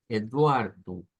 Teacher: siempre al final de las palabras las o se pronuncian como u